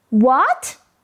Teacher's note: Notice how your voice starts low and then goes up